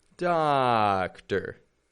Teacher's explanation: But the stress is different in Spanish from English. And in English, instead of giving two strong sounds, we're going to go strong, weak.